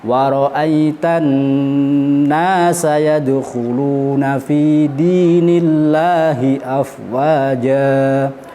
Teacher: Untuk nun tasydid kita dengungkan kadar 1 alif atau 2 ketukan.